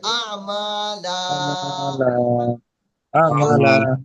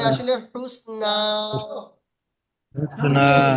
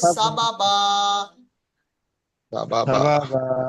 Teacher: দু জাবারের উপরে যখন আপনি ওয়াকফ করবেন বা থামবেন তখন সেটাকে আলিফ মাদ্দা করে এক আলিফ টান দিয়ে পড়তে হবে